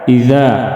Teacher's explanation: اذا مد اصلی 1 الف کے برابر کھینچ کر پڑھیں گے